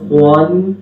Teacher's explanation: خا کے ساتھ واو کی آواز نہ ہے